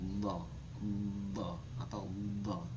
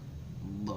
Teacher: Terus kemudian ada keterangan lagi geraham atas. Maksudnya dot ini keluar dari pangkal tepi lidah sebelah kanan atau kiri ya, terserah. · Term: jambia